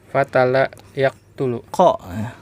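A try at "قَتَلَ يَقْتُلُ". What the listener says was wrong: Qatala bukan katala, ya, huruf qaf itu.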